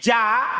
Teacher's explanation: keluarnya tengah lidah ketemu langit-langit atas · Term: jim